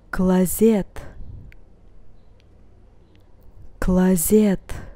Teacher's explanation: In this instance, letter O is not stressed, and that's why once again I pronounce it as A.